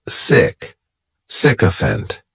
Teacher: this noun has three syllables and the stress is on that first syllable